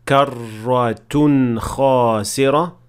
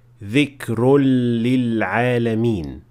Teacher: So that's why the difference is كرة خاسرة versus ذكر للعالمين, one with a straight noon and the other with a merged noon